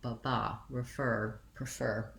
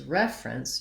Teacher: so what you really want is short long ba ba refer prefer etc versus reference you want more of a long short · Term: syllable stress